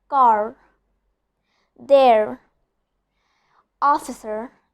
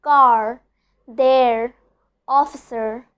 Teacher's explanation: I'm pronouncing the R very strongly. I'm rolling my tongue upwards. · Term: letter R